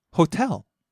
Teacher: starts high, falls on the second syllable, stays low